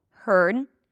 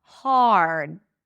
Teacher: Heard, I heard you, and hard should be pronounced differently. The first one has no vowel in the middle, heard. The second one has the R as in car, hard